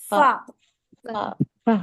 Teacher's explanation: पहले अब हवा निकलेगी और फिर निकलेगा फा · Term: हम्स